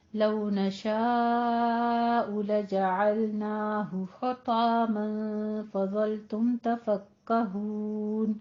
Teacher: نشاء میں مد متصل واجب 5 کاؤنٹ کرنے ہیں